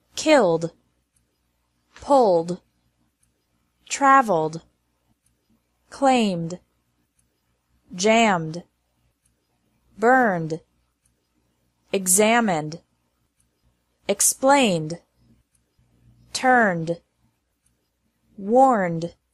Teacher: verbs ending with a z sound advised buzzed paused raised sneezed e d is pronounced like d after verbs ending in an L M or n Sound